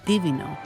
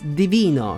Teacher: It’s “Divìno”, same stressed syllable as “divine” in English